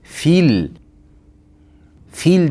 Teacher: Fil fe fil deganimizda feni tagidagi yo o'qilmay qoladi. Fil deb cho'zib qo'yishimiz xato bo'ladi.